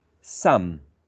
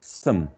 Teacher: The strong form would have a wedge, some, and the weak form for this word, for this function word, some.